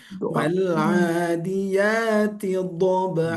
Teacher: do-nya itu kalau bisa ditebalkan karena itu tinggi ya, ditinggikan.